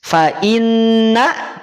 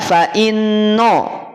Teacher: Tetapi awas, nunnya jangan tertarik tebal, tetap berada pada posisi tipis.